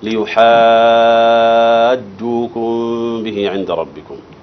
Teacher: المد هنا مد لازم. كلمي مثقل